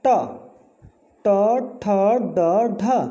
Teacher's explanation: हमारी जीभ तालु के पिछले वाले भाग से टकरा रही है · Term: मूर्धा